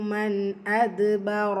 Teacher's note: நூன் சுக்கூனுக்கு அப்புறமா ஹம்சா இது உள்ளதை உள்ள மாதிரி ஓதணும், குன்னா செய்யக்கூடாது.